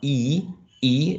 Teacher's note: it's a high sound because the tongue is raised up